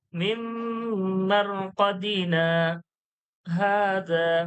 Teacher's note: কদিনা বলে দম ছাড়ছি নি, কিন্তু আওয়াজটা বন্ধ হয়ে যাচ্ছে, কিন্তু দম ধরা থাকছে। তারপরে হাজা বলি, মিম মারকাদিনা হাজা। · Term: সাক্তা